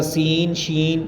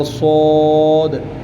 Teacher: سین، شین یہ نارمل آواز میں، اور صاد موٹی آواز کر کے اس کو پڑھا جائے گا۔